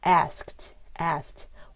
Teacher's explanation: if it ends in um on like an unvoiced sound ask no vibration it sounds like a t at the end